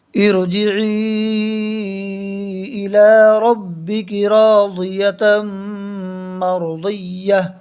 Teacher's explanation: تا کے اوپر 2 زبر کی تنوین ہے، تنوین والے حرف پر جب وقف کریں گے تو تا کو ہا سے بدل کر پڑھیں گے